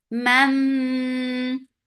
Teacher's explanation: This is idgham with gunna, so keep the sound in your nose for a longer time. Man, ma, 2 counts long.